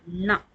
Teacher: நாவின் நுனி மேல்வாய் பல்லினுடைய அடிப்பகுதி. அப்ப பல் இருக்குது இல்லையா நாவினுடைய நுனி இந்த மேல்வாய் இந்த பல்ல வந்து தொடுற மாதிரி வந்து உச்சரிக்கணும். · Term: நகரம்